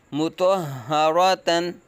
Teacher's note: ہا کی آواز حلق کے نیچے سے ادا کریں گے